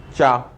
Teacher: जब आप इसको बोलते हैं तो तालु से निचले हिस्से से जीभ आपकी लग रही होगी साहब जी, चा, इसलिए तालुव्य बोल दिया।